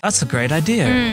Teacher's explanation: in some English accents, they add R between any two vowels to keep any two vowels apart. So that's why you might hear something like, that's a great idea, with the R sound at the end of idea.